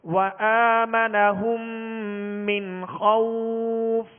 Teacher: نون ساکن کے بعد خا ہے، خا کون سے حروف میں سے؟ حروف حلقی میں سے، لہذا یہاں پر اظہار کریں گے، غنہ نہیں کریں گے